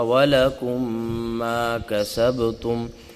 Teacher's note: اب ادغام شفوی کیا ہے، یہ تعریف پڑھیں گے تو سمجھ آئے گا کہ میم ساکن کے فوراً بعد میم مشدد آ جائے، میم ساکن کے بعد فوراً میم مشدد آ جائے تو وہاں پہ ادغام شفوی ہوگا، یعنی دونوں میم مدغم ہو جائیں گے، دونوں میں مل جائیں گے، اور وہاں بھی جو ہے غنہ ہوگا، ادغام کے ساتھ ساتھ غنہ بھی ہوگا، اور غنہ 2 سے 3 سیکنڈ کا ہوتا ہے۔